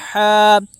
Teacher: الف مدہ کو ایک الف کے برابر کھینچ کر پڑھیں